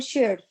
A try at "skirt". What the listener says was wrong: Okay, but that's not shirt. That's not SH, it's SK. Skirt. It's that second letter that throws you off. It's skirt, not shirt.